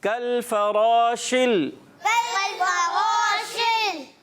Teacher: कल फराशिल, कल्फवाशिल, इसमें रा को पुर रखना है, शीन की अदायगी, शीन जो है मुंह में आवाज़ फैल जाएगी